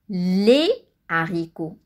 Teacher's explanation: le h aspiré empêche la liaison donc le h aspiré il n'y a pas de liaison exemple